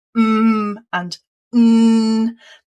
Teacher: Nasal meaning that that the air is coming out through the nose rather than the mouth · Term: nasal sounds